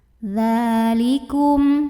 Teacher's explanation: Karena ada huruf dzal yang barisnya fathah tegak, maka bacanya panjang 2 harokat. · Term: mad asli